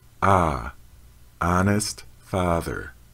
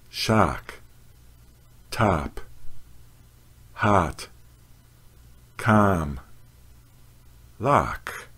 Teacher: The honest father vowel is pronounced with the jaw lowered fully. The mouth is wide open. The lips are unrounded.